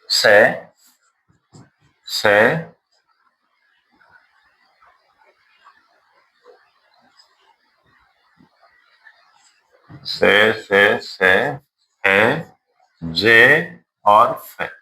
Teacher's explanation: ऐसे लगेगा कि स्वास वायु स्पर्श करते हुए घर्षण करते हुए आ रही है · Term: संघर्षी